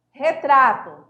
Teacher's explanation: O tônico está aí na paroxítona, no tra